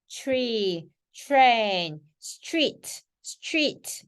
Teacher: 자, T와 R이 만나면 추예요